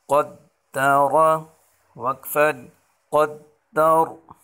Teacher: را کے اوپر زبر ہے تو اس را کو ہم موٹا پڑھیں گے